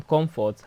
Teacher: comfort, has the stress on the first syllable